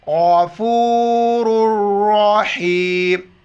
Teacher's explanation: ہے تو لفظ اللہ موٹا کر کے پڑھیں گے غفور الرحیم غین را اور دوسری را دونوں موٹے الفاظ میں موٹا کر کے پڑھیں گے